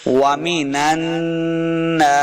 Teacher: وَمِنَ نون کو نون کے ساتھ ملانا ہے، نون مشدد ہے تو غنہ کر کے پڑھیں گے. وَمِنَ النَّاسِ سین کے اوپر سیدھی کے آواز آئے گی ناسی.